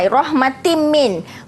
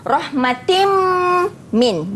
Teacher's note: hukum nun mati dan tanwin berjumpa dengan mim, dia idgham ma'al gunnah, dibaca dengan dengung